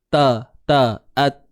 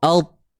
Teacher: Yang bezanya pada sifat. Kalau huruf ta, pangkal lidah dalam keadaan yang rehat ataupun itu yang disebut istifal, merendah lidah.